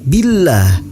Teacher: lafaz Allah dibaca tipis dan dipanjangkan 2 harokat. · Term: tarkik